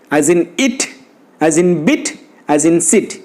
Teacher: The lips are loosely spread and the tongue is at lax. That means tongue is unrounded.